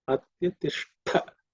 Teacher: This Ush is again cerebral Sha, tongue, tip of the tongue pointing up